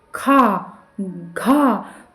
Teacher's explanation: आप बोल के देखिए, मुंह खोल के देखिए, आपके मुख से बहुत कम हवा निकलेगी। और हम जब बोलते हैं खा, घा, तो बहुत ज़्यादा हवा निकलती है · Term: महाप्राण